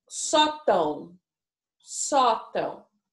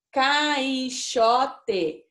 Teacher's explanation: Só que essa sílaba, né, o tão, o a e o o fica se transformando num som só lá dentro da nossa boca, lá dentro do nosso nariz. Por isso que se chama ditongo nasal, tá?